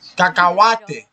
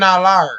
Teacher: I know, oh, that letter, H, in Spanish, doesn't have a sound. So I jump it.